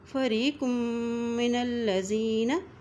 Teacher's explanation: معہم نبذ فریق من الذین، یہاں پر بھی قاف کی دو پیش کو میم کے ساتھ ملاتے ہوئے پڑھیں گے اور میم کے اوپر شد ہونے کی وجہ سے یہاں پر غنہ بھی کریں گے۔ فریق من الذین اوتوا الکتاب، تا کی پیش کو لام کے ساتھ ملائیں گے، لام کے اوپر شد ہے اور تا کے اوپر کھڑی زبر ہے، اس لیے تا کو ہم ایک حرکت لمبا ادا کریں گے۔